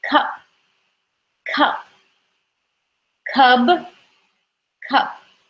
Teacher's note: the p is at the end of the word and remember it's unvoiced